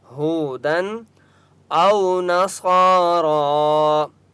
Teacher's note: ہودن واو مدہ ہے، ہا کو ایک الف کی مقدار کھینچ کر پڑھیں گے۔ دال کے اوپر تنوین ہے لیکن یہاں پر اخفا نہیں ہوگا کیونکہ آگے حروف حلقی ہے، اس لیے یہاں پر اظہار ہوگا۔